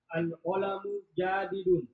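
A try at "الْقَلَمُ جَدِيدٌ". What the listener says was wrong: Ja-nya, coba lihat ja-nya panjang.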